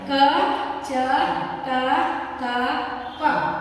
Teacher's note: ಪ್ರಕಾರವ ಒಂದು ಅಲ್ಪ ಪ್ರಾಹಣ ಅಲ್ಪ ಪ್ರಾಣ ನಾವು ಕಡಿಮೆ ಶಕ್ತಿಯಿಂದ ಉಚ್ಚಾರ ಮಾಡ್ತೀವಿ ಅಕ್ಷರಗಳ ಉಸುರು ಕಡಿಮೆ ಉಸಿರಿನಿಂದ ಉಚ್ಚಾರ ಮಾಡ್ತೀವಿ ಇವು ಐದು ಅಕ್ಷರಗಳು ಅಲ್ಪಪ್ರಾಣ ಕ ಚ ಟ ತ ಪ ಏನವ ಇವು